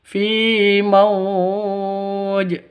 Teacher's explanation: Fi mauj panjangnya boleh dua, boleh empat, boleh enam ketukan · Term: mad lin